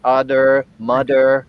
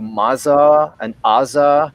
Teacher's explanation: um but uh yeah so more of a a dental plosive a voice dental plosive that sounds a bit like a d